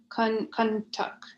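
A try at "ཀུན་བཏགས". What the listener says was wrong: Okay, listen, say kun, kun, no air, kun. Yeah, if you say kun, it means something else. Say kun, tak, kun tak. Yeah, kun tak.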